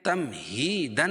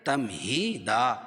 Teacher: 2 زبر کی تنوین پر وقف کی صورت میں ایک زبر کے قائم مقام الف لائیں گے اور دوسری زبر اپنی حالت پر باقی رہے گی.